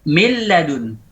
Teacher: Idgham kamil, huruf beserta sifatnya hilang.